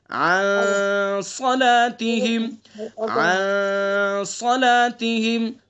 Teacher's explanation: ان کے اندر غنہ کریں گے، اخفا ہوگا اس کے اندر، ایک الف کے برابر ناک کی نرم ہڈی سے ادا کریں گے